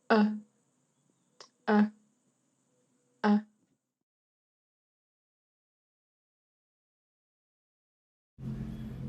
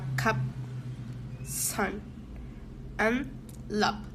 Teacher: This sound /ʌ/ is a mid low central vowel. The tongue is the middle of the mouth and the lips are unrounded.